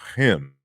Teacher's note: the velar has been lost and only the aspiration